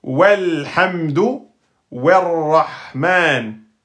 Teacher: Le hamzatul wasl, il est précédé d'une lettre. Hop, il saute.